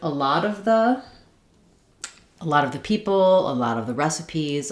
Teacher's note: Um, now the stress is not here on the first word of it, but the word lot gets stressed within this phrase